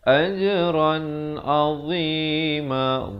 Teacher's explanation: dha dia macam makhraj huruf zal juga di hujung lidah itu, tapi bunyinya tebal